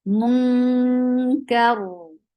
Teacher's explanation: And this is ikhfa, and that is light ikhfa because kaf is among light letters. And munka, if you want to stop, Ra will be heavy because you find Fatha before it. But if you will continue your recitation, Ra will be light because there will be Kasra under Ra.